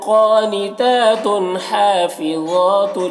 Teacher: क़ानितातुन, क़ाफ और ता दोनों में खड़ा ज़बर है जो अलिफ मद्दा की तरह है। और ता में जो तनवीन है, इस तनवीन में इजहार होगा, इस तनवीन को जल्द पढ़ना है। हा और ज़ा दोनों में खड़ा ज़बर है, एक जो अलिफ मद्दा की तरह है और ज़ा को पुर पढ़ेंगे, हुरूफ़ मुस्तालिया में से है।